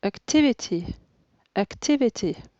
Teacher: C'est la deuxième syllabe qui est accentuée.